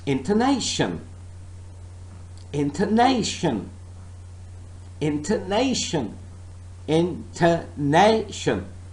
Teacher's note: I'm only stressing one part of this word, and I am saying and I'm pronouncing this word as intonation. The stress is on nay.